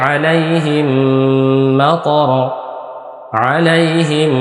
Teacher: জজম এটা হলো মিম সাকিন তাহলে মিম সাকিনের পরে মিম আসছে মিম সাকিনের পরে মিম আসছে তাহলে কি করতে হবে গুন্নার সাথে মিলিয়ে পড়তে হবে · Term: মিম সাকিনের ইদগম